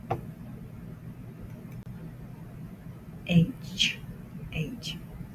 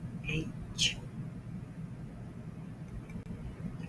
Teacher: First, the sound comes from the back, and then it goes to the front, and it makes a ch sound in the front. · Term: double sound